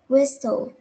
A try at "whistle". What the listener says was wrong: Ừ, đấy, rất là tốt rồi.